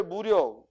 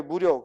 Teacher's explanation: 앞에 무력, 힘이 빠지는 거니까 짧게 발음하고, 뒤에 무력, 힘을 기르는 거라 오래 걸리니까 길게 발음해.